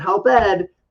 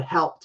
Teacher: It actually has a light T pronunciation.